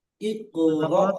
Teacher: সাকিনওলা হামজাকে ধাক্কা দিয়ে বা ঝাটকা দিয়ে উচ্চারণ